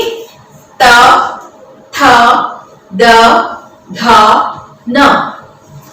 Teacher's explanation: हम हमारे जीभ को दांतों के साथ स्पर्श करते हुए, दांतों के पिछले हिस्से की तरफ इन्हें स्पर्श करते हुए इनको उच्चारित किया जाता है। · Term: दंत्य ध्वनि